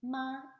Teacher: It's a high flat tone, and that's this one, and it sounds like ma, and it means mom.